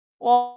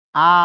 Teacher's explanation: সংবৃত হচ্ছে ঠোঁট সংকুচিত থাকে, আর বিবৃত হচ্ছে ঠোঁট তুলনামূলকভাবে বিস্তৃত থাকে।